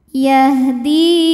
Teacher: Sebab ada ya sukun yang didahului baris kasrah, maka huruf dal yang berbaris kasrah kita panjangkan 2 harokat. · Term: mad tabi'i zahiri